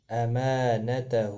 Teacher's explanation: ما الف مدہ ہے، ہا کے اوپر الٹا پیش ہے، دونوں کو ایک الف مقدار کے برابر کھینچ کر پڑھا جائے گا